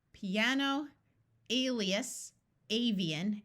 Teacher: words with IA in the middle rather than at the end, where the I has a clear long E sound